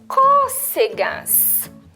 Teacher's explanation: acento agudo, abriu o som do O